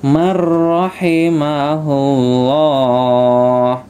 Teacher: Ini tidak man rahima, tapi mar langsung dimasukkan ke huruf ro ya. Ini namanya idgham bila gunnah ya, dibaca jelas atau dimasukkan ke huruf ro-nya, dimasukkan ke huruf ro-nya ya.